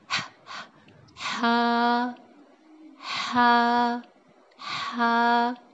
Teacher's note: تو آپ لوگوں کو فیل ہوگا کہ ہا کہاں سے؟ ہمارے حلق کے سینٹر، جو سینٹر والا حصہ ہے وہاں سے نکل رہا ہے